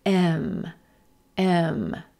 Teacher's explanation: pepper M again starting with that red pepper m vowel and moving into the M consonant as our lips come together and air travels into the nose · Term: mm consonant